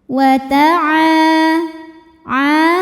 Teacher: cara bacanya huruf Ain panjang dua harakat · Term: Mad thii dahiri